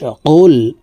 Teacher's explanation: কফ হরফের উচ্চারণ জিহ্বার গোড়া তার বরাবর উপরের তালুর সঙ্গে লাগাইয়া উচ্চারণ করে পড়তে হবে